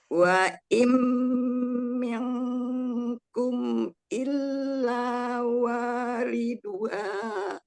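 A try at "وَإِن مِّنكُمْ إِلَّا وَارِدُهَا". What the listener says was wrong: Bukan miang enggak mi kasroh mim kasroh mi bukan miang, jangan dimiringkan mi terus lalu wa minkum illa wariduha. Waridu, wanya panjang.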